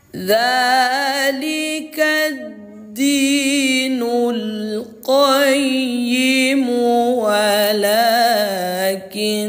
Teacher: Nama hukum tajwidnya gun ghunah musyaddadah. Cara membacanya didengungkan, ditahan suaranya dua ketukan atau dua harakat.